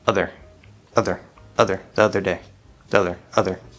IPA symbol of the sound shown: ə